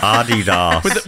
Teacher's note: With emphasis on the first syllable.